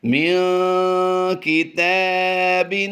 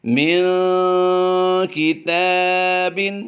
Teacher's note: اس وقت جو آپ اپنی اسکرین پر لفظ دیکھ رہے ہیں من کتاب، تا کھڑی زبر تا کو ہم نے لمبا کیا ہے، نون ساکن کے بعد کاف حروف اخفا سے ہے، اس لیے ہم نے یہاں پر غنہ زمانی کیا ہے۔